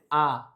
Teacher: বিবৃত মানে হচ্ছে মুখটা খোলা। প্রসারিত করা।